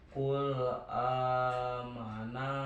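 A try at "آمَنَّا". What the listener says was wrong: Nah ditekan amanna atasnya ditekan ya amanna.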